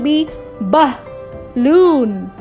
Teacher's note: क्योंकि इसमें आ रही है श्वा साउंड, बिकॉज ए जो है वो बी और एल 2 कॉन्सोनेंट्स के बीच में आ रहा है और यहाँ आवाज़ निकल रही है आह, आह। एक झटके से, गले से एक झटके से आवाज़ निकल रही है आह।